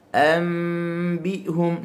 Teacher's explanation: Kita tukar daripada huruf nun kepada huruf mim ketika mana nun mati bertemu dengan ba. Dan dalam keadaan mulut kita ni kita rapatkan sahaja bibir. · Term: iqlab